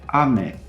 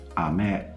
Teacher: minimal pairs as you would call them in phonetics and phonology they're only distinguished by their pitch accent patterns